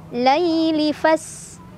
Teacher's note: Lay ada harf lin karena ya sukun sebelumnya fathah, dibacanya dilembutkan.